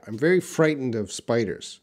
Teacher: so that T is reduced